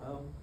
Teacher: that question mark is a glottal stop or the sound of uh oh the middle sound